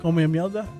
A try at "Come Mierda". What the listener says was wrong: There's no L. Come Mierda.